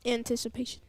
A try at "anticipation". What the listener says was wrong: You said ant. And I mean like and. You said anticipation.